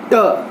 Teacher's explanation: उच्चारण में जिह्वाग्र उठकर मूर्धा को स्पर्श करता है, तो उच्चारित ध्वनियों को मूर्धन्य ध्वनि कहा जाता है।